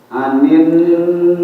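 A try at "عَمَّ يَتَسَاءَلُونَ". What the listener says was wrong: A-nya yang pertama a. Anin pakai ain.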